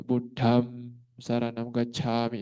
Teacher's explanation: Buddham damnya itu adalah Dhanita juga mengeluarkan angin juga